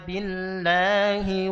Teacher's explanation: Karena ada Rabb buat agama-agama lain yang namanya Al itu kan dewa, itu dewa Allata Uzza, maka harus ditebal. Tapi ketika sebelumnya kasroh, maka kembali ke asalnya, yaitu tipis.